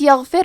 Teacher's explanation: غین کی ادائیگی حلق کے اوپر والے حصے سے ہے، غین حروف تفخیم میں سے ہے تو ہم یہ حرف کو موٹی آواز میں پڑھیں گے۔